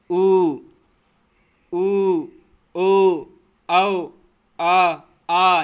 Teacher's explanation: पश्च स्वर दोस्तों जिन स्वरों के उच्चारण में जीभ का पश्च भाग काम करता है।